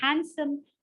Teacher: The D is swallowed.